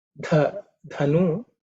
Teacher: the dha is the fourth letter in the tha varga, so it has to be aspirated.